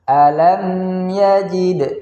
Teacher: Nah, di situ alam ya mim mati bertemu dengan huruf ya, hukumnya adalah izhar syafawi, yaitu ada mim sukun bertemu dengan ya, maka cara bacanya mimnya dibaca dengan bacaan yang jelas.